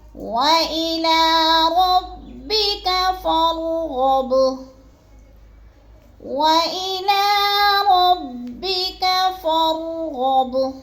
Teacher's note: فا کو بھی را کے ساتھ ملا کے پڑھنا ہے اور را کو پر کر کے پڑھنا ہے۔ غب، غین بھی پورا پر پڑھا جائے گا اور با کو ہم نے تھوڑا سا ہلا کے پڑھنا ہے کیونکہ حروف قلقلہ میں سے ہے۔